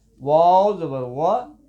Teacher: واو کو پڑھتے ہوئے ہونٹ گول ہوں گے، نہ تمام گول